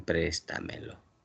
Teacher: La mayor fuerza de voz está en la trasantepenúltima sílaba. Es una sobresdrújula.